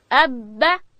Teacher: با ادا کیږي د دواړو شونډانو د یو ځای کېدو څخه، د لندې حصې څخه.